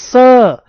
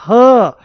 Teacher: जब इनको बोल रहे होते हैं तो वायु मुंह में रगड़ खाती है